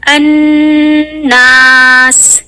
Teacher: अन्नास, यानी जो अलिफ की आवाज है उसे हम 2 काउंट्स खींचेंगे। ये जो अन है इसका नून पे जो मैं स्ट्रेस दे रही हूँ, इस नून की आवाज को जो मैं लंबा कर रही हूँ ये है अकमल गुन्ना की वजह से। उसके बाद मैं अलिफ की आवाज को 2 काउंट्स लंबा खींचूंगी।